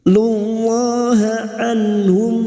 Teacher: nun sukun bertemu ha idhar halki dibaca jelas tanpa mendengung